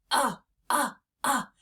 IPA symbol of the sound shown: ŭ